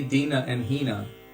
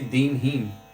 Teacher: actually the devotees from bengal they don't say dina and hina they say din heen